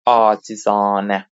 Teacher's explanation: Baxın birinci A uzanacaq və ikinci A uzanacaq. İki dənə Alar uzanacaq acizanə.